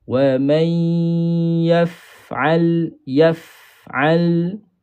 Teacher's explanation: Sebab yang melibatkan huruf fa ini bukan dua bibir tetapi bibir bawah dengan gigi kacip atas. Walaupun dia masuk dalam perbahasan as-syafatain tetapi bukan bermaksud dua bibir tu kena rapat.